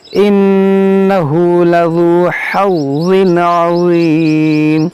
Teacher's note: تو اس کو ذال کو اور ضا کو دونوں کو نرمی سے پڑھنا ہے، ذال باریک اور ضا موٹا کرنا ہے